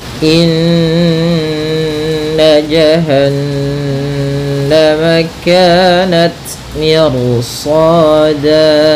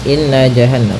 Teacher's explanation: mirsada pada bacaan indah di sini ada hukum tajwid yaituunah yaitu cara membacanya adalah kita menahan suara nunnya ya terlebih dahulu sepanjang dua harakat lebih sedikit